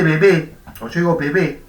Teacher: No distinguimos entre la B oclusiva y la B fricativa.